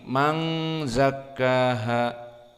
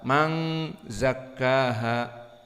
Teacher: Man zakkaha, dan dia karena makhrajnya khaysum dan ikhfa, maka harus ada gunnah, dan gunnah ini harokatan. Maka jangan cepat man zakkaha, tapi man zakkaha.